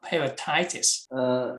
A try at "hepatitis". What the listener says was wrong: No, not T. Okay. You see here? Hepatitis.